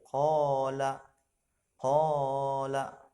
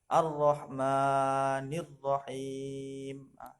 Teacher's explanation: Untuk panjangnya, ukuran panjangnya itu satu alif dua harokat, dua ketukan. Panjang dari mad asli atau mad tabi'i ini dua ketukan, satu alif dua harokat.